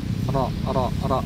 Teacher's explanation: Ketika berharakat fathah maka tebal tafkhim ya.